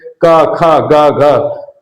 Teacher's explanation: इसके उच्चारण में पहले हवा मुख से रुक जाती है। फिर धक्का देकर बाहर निकलती है। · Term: स्पर्श व्यंजन